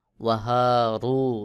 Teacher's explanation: রতে পেশ রয়েছে, র পেশ রু, একটু আওয়াজ মোটা করে পড়তে হবে